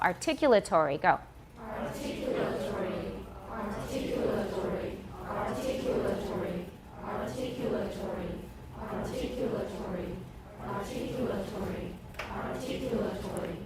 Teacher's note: Where's the stress? Second syllable, articulatory.